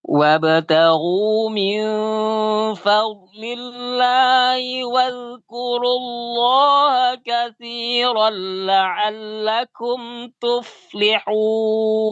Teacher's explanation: Kafnya kasih hams sedikit.